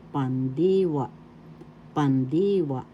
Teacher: conjugations verb inal is pandiwa pandwa first syllable second syllable d third syllable wa the accent is in the second syllable